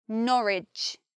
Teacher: Another thing is that in Ipswich, we hear the W, but we don't say Norwich. In Norwich, there is no W, the sound disappears. I think it's because the tongue flows much more easily if we just say Norwich and we don't add that W because it's extra tongue movements. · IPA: nɒ.rɪdʒ